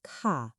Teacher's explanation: because she is making a statement, handing him the drink, she uses the falling tone, ka. It sounds grounded and polite.